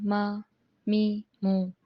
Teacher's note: دونوں ہونٹوں کے باہر حصے کو ملانے سے ادا ہوتا ہے میم